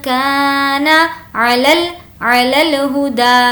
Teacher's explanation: ہا کی آواز اندر سے حلق میں سے نہیں آئے گی کیونکہ یہ چھوٹی ہا ہے. علی الہدا، دا کو کھینچیں گے کیونکہ یہاں پر الف کھڑا زبر ہے.